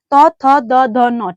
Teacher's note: तो ये जो हमारी जीभ है वो कहाँ चिपकती है? दंत पे। ठीक, दंत पे चिपकती है, तो ये हो गया दंत वर्ग।